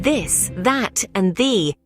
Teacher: language the th sound comes in two varieties voiced and unvoiced the voice th is found in words like this that and the where your vocal cords vibrate as you pronounce these words